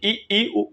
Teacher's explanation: इ इ उ उ बोलने में लगभग मुख पूरा बंद होता है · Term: समृत स्वर